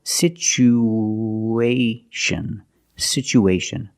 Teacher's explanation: We have two vowels together, the oo and the a. We need to link these vowels with the sound w, like the W sound, w, together.